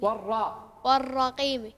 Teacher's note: كل القراء يفخمون حرف الراء لأنه مفتوح ولم يسبقه لا كسر ولا شيء